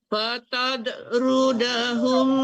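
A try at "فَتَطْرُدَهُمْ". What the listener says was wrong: Tidak, jangan fatad. Fatad itu dal itu. Itu to itu huruf ya, huruf. Fatato. Pantulkan.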